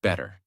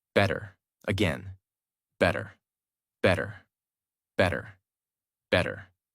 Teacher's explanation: In the first version, your mouth stops more. In the second version, the sound flows more smoothly. That smoothness is the American feeling.